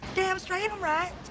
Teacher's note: It sounds like she's trying to mimic southern American English. Lowering the vowel sound in the word right